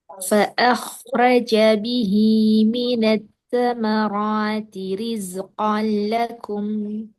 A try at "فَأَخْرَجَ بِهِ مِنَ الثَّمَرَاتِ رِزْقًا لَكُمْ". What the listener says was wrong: Stabil, tebal. Ro, tambah tebal.